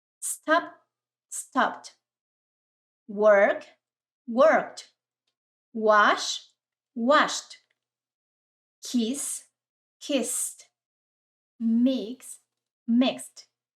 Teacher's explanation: la terminación ed, el sonido es como una t